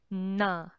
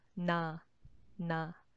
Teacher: But in Korean, when you say na, the air is not completely out. It's more like staying around your mouth, na, na.